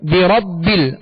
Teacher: بربل، را پر زبر ہے، را کو پر پڑھیں گے، با کو جمع اور مضبوطی کے ساتھ ادا کریں گے، دوہرا پڑھیں گے اس لیے کہ با پر شد ہے، یہ مشدد حرف ہے.